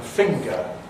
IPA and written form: ˈfɪŋgə (finger)